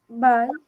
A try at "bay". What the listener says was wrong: Bay. remember, it has to have the A sound. So bay.